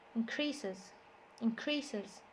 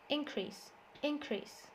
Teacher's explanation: So the verb, the stress is on the second syllable, increases, increases. The noun, the stress is on the first syllable, increase, increase.